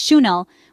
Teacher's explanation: The accurate way to say it is Chanel, with a soft sh sound at the start and emphasis on the second syllable.